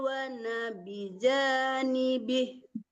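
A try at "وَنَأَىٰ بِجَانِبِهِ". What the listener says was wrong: Wa nabijanibi, A-nya ketinggalan.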